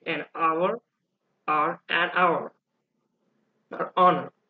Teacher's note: the h is silent and you hear a vowel sound at the beginning you do not hear the heart hit sound that's why people